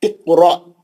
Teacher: خلخلہ صغرا بھی ہے اور حمزہ ساکنہ کا جھٹکا بھی ہے